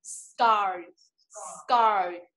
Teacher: Với hai âm nó ra hơi cùng với nhau. Vậy chúng ta chỉ được nửa S và nửa K.